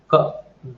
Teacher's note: Say, for example, if I want to produce k, then this closure will be at the throat, velar level, velum level